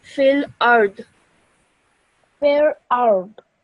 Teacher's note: So what you do is you look at the last letter before the pausing sign, which is dad with a kasra. And what happens to a kasra is it becomes a sukoon when you're pausing